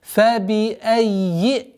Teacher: Удваиваем и обращаем внимание на огласовку кесра, чтобы четкое и ясное произношение после удвоения звука «я». فَبِأَيِّ. Здесь, естественно, долгота в размере двух огласовок.